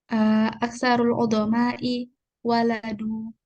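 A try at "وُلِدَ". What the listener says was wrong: Bukan waladu, wulidu. Wulidu. Aksarul uzama'u wulidu, dilahirkan. Wulidu. Dhamma awaluhu wa kusira ma qabla al-akhir. Wulidu, kebanyakan para pembesar wulidu dilahirkan.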